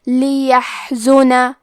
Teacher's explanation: کلمت لیحزن میں یا پہ زبر ہے، ہا ساکن ہے، پھر زے پہ پیش ہے، تو ہم یہ تینوں حرکات کو ظاہر کریں گے اور ہا کو ہمزے سے پڑھیں گے